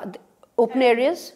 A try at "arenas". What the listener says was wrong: No, you said areas. But it's arenas. You've written arenas.